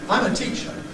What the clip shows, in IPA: ˈtiʧə